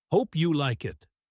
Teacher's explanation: It is very informal. Words are blended together. Hope you like it can sound like one long word.